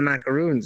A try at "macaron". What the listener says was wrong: Actually, technically it's pronounced macaron. It's not a macaroon. Macaroon is something different.